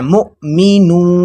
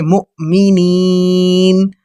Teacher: حمزہ پر جزم ہے، جزم حمزہ پر ہم نے جھٹکا دے کے پڑھنا ہے